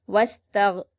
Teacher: غین کو قلقلہ نہیں کریں گے، اس کا خاص خیال رکھیں